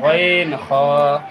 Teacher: 3 নম্বর মাখরাজ, হলকের শেষ হইতে।